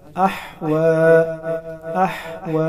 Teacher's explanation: अहवा, अहवा, हा को हलक यानी गले के दरमियान से अदा करेंगे। वो पर खड़ा ज़बर है, 1 अलिफ के बराबर खींच कर पढ़ा जाएगा।